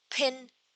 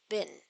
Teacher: in words like pin, the presence of aspiration is essential, crucial for distinguishing this word from others like bin.